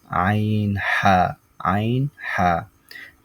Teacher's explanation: দুই নাম্বার মাখরাজ হলকের মধ্যখান হতে